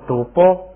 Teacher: 原来是塔，是送气的，一加上加字变成不送气打，就变成了赌波